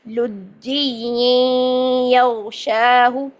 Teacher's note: اب یہ نون ساکن کے بعد بھی دیکھیں تو ادغام کا قاعدہ بن گیا، تو یہاں پر ہو گیا ادغام، ٹھیک ہے؟ یہ ساؤنڈ آ گئی، نون اور یا مکس ہو گئے